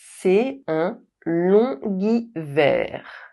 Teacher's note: [g] is added when the liaison is made with the final silent consonant G.